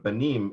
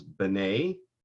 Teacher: Now, if you drop the mem, so there's no mem here, you drop the mem and you lengthen the vowel before it. So instead of banim, it becomes b'nei.